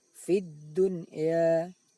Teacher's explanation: sekalipun nun sukun bertemu ya tidak boleh dibaca dengung karena itu bukan bacaan idgham bihunnah, akan tapi namanya bacaan izhar mutlak atau izhar wajib.